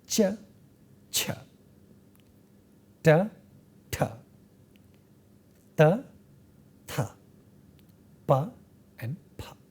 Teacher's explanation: these sounds are distinct from one another with respect to extra flow of air and not extra flow of air